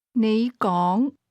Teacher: Those words are both pronounced with a rising tone, but you begins at a low level and speak at a higher level.